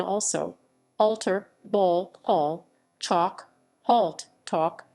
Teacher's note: rounding caused by a following dark l which may no longer be sounded